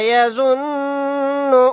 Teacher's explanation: یہاں پر نون مشدد ہے، یہاں پر غنہ کریں گے